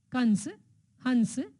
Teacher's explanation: इसका उच्चारण नाक से किया जाता है और इसके उच्चारण में अधिक जोर लगाना पड़ता है। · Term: अनुस्वार